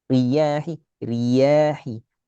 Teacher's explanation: Jadi agak tasdid ke ya. رياح Riya, jangan naik suara pada ri. Kesannya tasdid ke ya. Riyahi, riyahi.